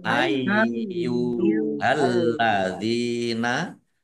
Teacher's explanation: lamnya dibaca dobel ada tasdidnya dal kasrh ya sukun mad thobi panjang dua harakat alladzina kata sambung atau isim mausul amanuttaqulaha Alif fathah berdiri mad thobi'i.